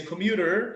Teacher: saying the r sound instead of t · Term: american english